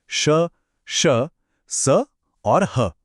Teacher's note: इन्हें बोलते समय मुंह से जो हवा निकलती है उसमें एक घर्षण एक फ्रिक्शन होता है जिससे एक हल्की सी गर्मी महसूस होती है। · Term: ऊष्म